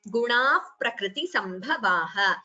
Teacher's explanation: visarga followed by pa becomes upadhmaniya.